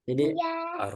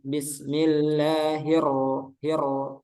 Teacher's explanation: Huruf ro-nya kurang takril. Takril itu bergetar. Jadi Ar. digetarin.